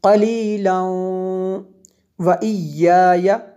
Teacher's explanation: زا جو ہے یہ وقف مجوز کی شارٹ فارم ہے، یہاں پہ ملا کے پڑھنا زیادہ بہتر ہوتا ہے، اور آپ وقف بھی ویسے کر سکتے ہیں لیکن ملا کے پڑھنا زیادہ بہتر ہے جی۔ اگر ملا کے پڑھیں گے تو یہ واو پہ شد لگانی پڑے گی، کیونکہ تنوین کے بعد حروف یرملون میں سے واو ہے، یہاں پہ ادغام ہوگا۔